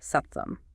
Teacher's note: these palatal stops turned into sibilant sounds like tes or sh.